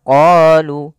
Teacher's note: kita memanjangkan huruf qo sepanjang dua harakat karena pada lafal qo ini ada bacaan Mad thii kita lihat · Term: mad tabi'i